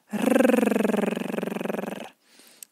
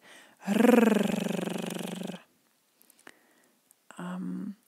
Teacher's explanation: This is at the tip of your tongue, and the tongue vibrates. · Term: rolled R